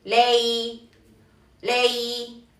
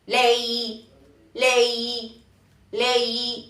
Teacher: Se tiene que como que curvear un poco el tono, ¿ok? Sube, baja, sube, baja, sube, baja. Entonces es lei, lei, lei y se prolonga.